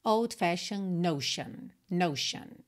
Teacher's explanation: essas terminações de palavras t o n se pronuncia sh sh